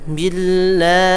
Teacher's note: Ya, selalu dipanjangkan ya. Setiap akhirannya itu lafaz Allah dipanjangkan pada lafaz Allahnya ya.